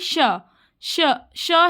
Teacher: श्वास की पूरी तरह से रुकावट नहीं बल्कि किसी स्थान पर हल्का संकुचन है